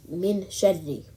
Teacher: only the nasal sound of noon is heard the reciter does not use his or her tongue to articulate noon